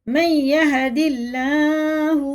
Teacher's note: اللہ کا لام زیر سے تو باریک پڑھیں گے